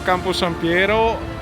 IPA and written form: ˌkamposamˈpjɛːro (Camposampiero)